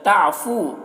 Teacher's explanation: فو میں واو مدہ ہے، اسے ایک الف کے برابر کھینچیں گے